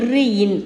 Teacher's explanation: கடைசியாக இன். இது வந்து மேல்வாயை நாக்கின் நுனி மிகவும் பொருந்துவதால் இந்த இன்னும் பிறக்கின்றது